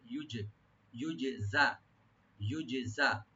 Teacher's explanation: সু আই ইউজজা বিহি, ইউজজা, এখানে জিমটাকে একটু রাইট দিয়ে পড়তে হবে, জাটাকেও ইউজে, আবার জিমে একটু হালকা কলকলা হবে, yani ইকো হবে। ইউজে, ইউজজা, ইউজজা, একটু মাহরাজগুলো ঠিক করে পড়তে হবে এখানে।